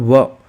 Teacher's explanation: आप व करोगे, देखो व बोलोगे आप, तो यहाँ पर व, तो व में क्या हो जाएगा, हमारे होठ टकरा रहे एक दूसरे से, ठीक है, व का उच्चारण करते समय, और साथ में हमारी जीभ दांत को भी टच हो रही है, व, ठीक है।